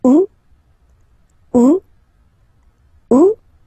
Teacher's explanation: The first one, you don't pronounce the final T